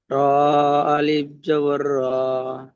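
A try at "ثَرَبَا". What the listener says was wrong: যে র আর বায়ের সঙ্গে তো আলিফ নেই, তাহলে ওখানে আলিফ বলার দরকার নেই। র যাবার র, বা যাবার বা, সা রবা।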